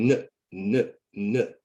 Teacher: So when I say n, n, n at the end of listen, n, n, n, the vocal cords are moving or vibrating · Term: voiced sound